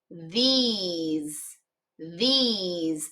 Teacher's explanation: the S is kind of making a little bit of a Z sound